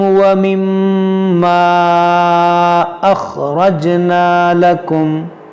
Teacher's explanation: میم مشدد ہے اور یہاں پر ہم غنہ کریں گے، اور یہ الف سے پہلے زبر ہے تو یہ الف مدہ ہے، اور الف مدہ کے بعد حمزہ دوسرے کلمے میں ہے تو یہاں مد منفصل کریں گے۔